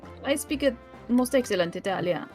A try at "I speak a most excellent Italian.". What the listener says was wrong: You gotta add a little bit more music to it. It's like a bouncy language.